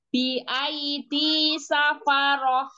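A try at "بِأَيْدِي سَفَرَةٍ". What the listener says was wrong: enggak ya roh tebal lagi bi aidi safarah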